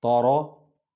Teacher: تا کو ہلکا پڑھیں گے، را کو پر پڑھیں گے، لیکن تارا بھی نہیں پڑھیں گے۔